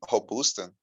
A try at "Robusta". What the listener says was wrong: Robusta. Lembra que eles não falam ro, igual a gente fala. Robusta.